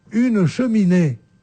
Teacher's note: On n'appuie ni sur le che, ni sur le mi, ni sur le nez. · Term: ton égal